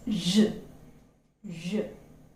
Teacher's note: it's a voiced palato-alveolar fricative, and as you utter this sound, we can feel the vibration